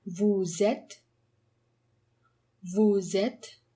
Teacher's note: There's a liaison between vous and êtes, and therefore we get the z sound.